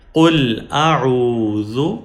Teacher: ذال پیش ذو قل اعوذ. ذال کے اوپر پیش ہے اور پیش شارٹ واول ہے، ذال کو لمبا نہیں کریں گے